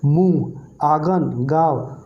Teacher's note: मुंह से भी हवा निकलेगा प्लस नाक से भी निकलेगा, मुंह से ज़्यादा निकलेगा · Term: अनुनासिक